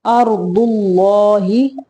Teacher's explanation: اللہ کا لام موٹا پڑھیں گے